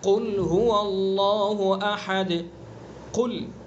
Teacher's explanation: اگر ہم نے اس کی صفت پر اس کو ادا نہیں کیا تو یہ کاف بن جائے گا، اور دیکھیے یہاں کاف بنتے ہی معنی بھی بدل جائیں گے۔ قل بڑے قاف سے زبان کی جڑ اور اس کے مقابل اوپر کا تعلق وہاں سے ادا کریں گے اور پر کریں گے